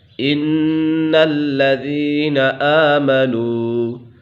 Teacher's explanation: نون مشدد ہے، اسے غنہ کر کے پڑھیں گے کیونکہ نون مشدد اور میم مشدد میں ہمیشہ غنہ ہوتا ہے۔